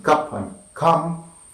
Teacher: central, between, open and half open, unrounded and short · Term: central sound